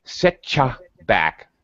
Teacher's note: T plus U is going to sound like cha